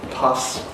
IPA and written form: pʌs (pus)